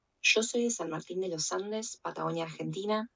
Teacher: did you hear how she pronounced the Y as sh? That's called yeísmo, reilado como yo.